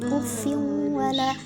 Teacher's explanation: huruf nun sukun atau tanwin dilebur ke huruf berikutnya dan didengungkan selama 2 harokat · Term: idgham bi gunnah